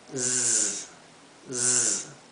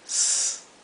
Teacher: la S se pronuncia como un zumbido, z, z, mientras que esta se pronuncia s, más como un silbido, como la S española